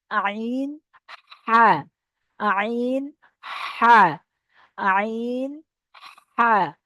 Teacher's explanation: আইন হা, এটা গলা মাঝখান থেকে উচ্চারিত হবে, মাঝখান। ঠিক আছে, গলার এই যে মাখরাজ এখানে মাঝখান থেকে উচ্চারিত হবে।